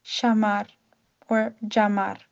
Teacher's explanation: The use of the double l in many Spanish speaking countries sounds similar to a y but in Argentina it can have a sh or j sound. For example, the word to call meaning yamar would be shamar or jamar.